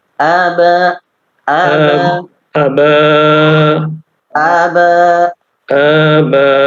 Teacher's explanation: A-nya tidak terlalu panjang ya, tapi itmam dulu. Harokatnya itu jelas.